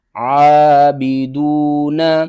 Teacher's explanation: زیر بی، عابی، دال واو پیش دو، عابدو، نون زبرنا، عابدون، عین کو آپ نے حلق کے درمیان والے حصے سے ادا کرنا ہے ، اور دال کے بعد دیکھیں واو ہے، واو حروف مدہ